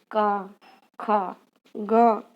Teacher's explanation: दूसरी जो आती है वो है कंठ। कंठ से निकलने वाली ध्वनि जो रहती है वो जिह्वा के पिछले भाग से निकलती हैं। प्रायः जो जिह्वा अपनी रहती है, जहाँ से जुड़ी रहती है, पिछले भाग से कंठ की ध्वनि निकलती है।